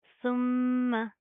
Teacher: सा के ऊपर जुबान बाहर की तरफ आएगी।